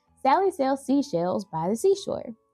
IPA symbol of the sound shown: s